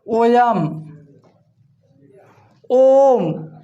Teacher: इनके उच्चारण में मूल स्वर का तिगुना समय लगता है। इनके उच्चारण में मूल स्वर का तिगुना समय लगता है, इसलिए इन्हें प्लूत स्वर कहा गया है।